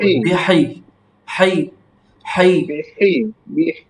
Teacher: বিহাই একটু চাপ হবে আর বাতাস বের হবে